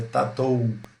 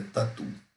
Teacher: E ou, né, como em tatu, veja que o e u, ele vira u, tatu. Este ditongo vai ter sempre o som de u, não de ou, tá? Não é tatou, é tatu, tá?